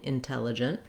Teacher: I have a clear red tent vowel on the tell. It's just like the word tell.